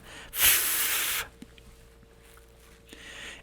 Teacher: It's f, your top teeth going down on your bottom lip. Not hard, of course, but that's where that sound comes from. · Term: labial dental